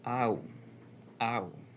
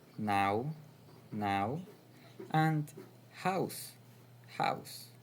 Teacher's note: if you start with the sound A and glide to the sound U, you get the diphthong ow, ow. You can find it in now, now, and house, house.